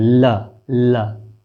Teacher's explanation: जीभ प्रकंपित कर टकरा रही है किसके, दंत के मूल से।